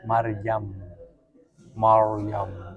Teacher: menipiskan ra. Padahal seharusnya dibaca tebal.